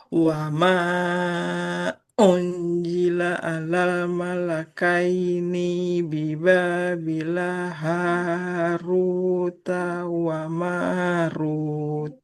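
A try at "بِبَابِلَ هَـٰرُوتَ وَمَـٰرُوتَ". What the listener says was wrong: Biba bila lamnya tidak panjang. Biba bila haruta taknya juga nggak panjang. Biba bila haruta wa marut.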